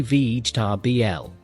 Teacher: The middle sounds almost disappear.